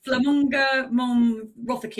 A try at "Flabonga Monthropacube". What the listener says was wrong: You're missing a B. Flabonga. Flabonga.